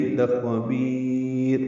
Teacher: مدہ کے بعد را ساکن ہو گئی، لخبیر مد عارض سکون، را باریک پڑھیں گے وقفاً